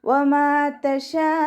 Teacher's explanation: ഷീനിൻ്റെ കൂടെയുള്ള മദ്ദിനെ 4, 5 കൗണ്ട് വീതം നീട്ടിക്കൊടുക്കുക. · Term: മദ് വാജിബ് മുത്തസിൽ